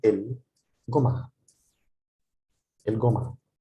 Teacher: In Egypt, the jim, this letter is pronounced, this letter that I will highlight is pronounced jim, ja, ja, ja in standard Arabic, but in Egypt it's pronounced ga, so el-gum'a.